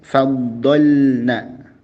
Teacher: Dan jelaskanlah huruf lam pada kata faddalna dengan lembut, yakni huruf lam menghadapi huruf nun.